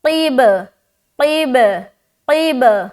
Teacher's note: बा के ऊपर सुकून आ गया तो यहाँ पर फिर कलकला करेंगे क्योंकि बा भी हरूफ कलकला में से है।